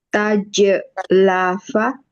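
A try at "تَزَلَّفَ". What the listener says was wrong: Bukan, ini tasdid pasti hidup. Bukan, ikut wazan apa dulu? Wazannya. Oke, tafa'ala. Harus hidup zainya ya. Tazallafa. Bukan tazlafa, nggak mungkin. Kalau mati kemudian bertemu tasdid, jelas nggak mungkin. Harus hidup. Tazallafa.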